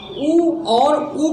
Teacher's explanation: उ और उ का उच्चारण स्थान साथियों ओष्ठ से होता है। उ और उ बोलेंगे, इन्हें इनका उच्चारण करेंगे तो ओठ का क्रिया होगा।